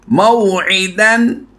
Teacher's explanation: वाव साकिन से पहले हरफ पर ज़बर है तो हमने इसको लंबा नहीं करना। मौईदन सिंपल, बिल्कुल नहीं लंबा करेंगे। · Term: वाव लीन